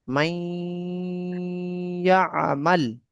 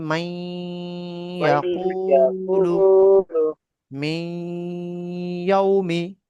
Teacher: গুণনাটা একটু নাকের মধ্যে গিয়ে লুকিয়ে যাবে, সেভাবে গুণনা করতে হবে।